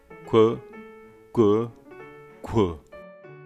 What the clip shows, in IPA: kʷ, gʷ, ghʷ